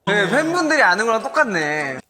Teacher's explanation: So first here, it starts like normal. It goes up at the start and then down at the very end. In the middle, it drops a bit, but no big deal. And then raises a bit, also no big deal. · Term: good intonation